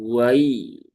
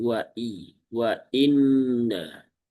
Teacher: Hamzah jangan sampai terayun ya sehingga terbaca menjadi hamzah yang ringan. Dia sifatnya syiddah ya, kuat. Maka wa'i bukan wai tapi wa'i wa inna.